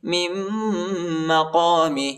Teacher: میم کو دوسرے میم کے ساتھ ملائیں گے، دوسری میم پر شد آئی ہے اور غنہ کریں گے ، نون نہیں پڑھا جاتا، نون ساکنہ ہے، من مقام ابراہیم